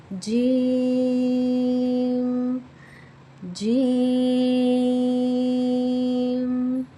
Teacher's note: जीम का जो मखरज है हमारी जुबान के दरमियान और हमारे तालों के दरमियान से है। यानी कि हमारी जुबान का दरमियानी हिस्सा तालों के दरमियानी हिस्से चला तो जीम अदा होता है। · ہماری زبان کا درمیانی حصہ تالو کے درمیانی حصے سے لگے تو جیم ادا ہوتا ہے۔ ہماری زبان یعنی ہماری ٹنگ کا مڈل پارٹ جو ہے اپر پیلٹ کے مڈل پارٹ سے ٹچ کرتا ہے تو پھر جیم ادا ہوتا ہے۔